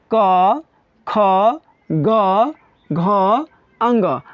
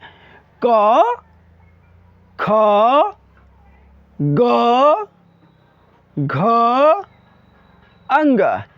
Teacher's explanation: कवर्ग का जो उच्चारण स्थान है बाबू वह कंठ है